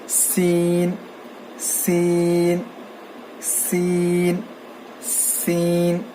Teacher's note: سین میں جو ہے سیٹی کی آواز آنی چاہیے اور زبان کی نوک کو نیچے کے دانتوں کے جڑ کو لگانے سے سین ادا ہوتا ہے